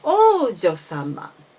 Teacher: So you should make the pitch from high to low in one long vowel.